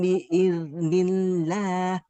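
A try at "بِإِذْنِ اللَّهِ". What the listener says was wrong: biiz. Nah, huruf zal sukun harus lebih mengalir lagi suaranya. Biiznillah.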